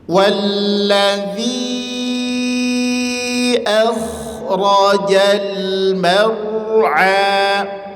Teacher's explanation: Yang kedua mar'a, mim tipis, ra tebal, jangan dibaca mar'a jadi ma, tidak.